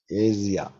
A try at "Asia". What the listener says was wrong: No, not Asia, not 3 syllables, 2 syllables. Ja. Not ia, just ja.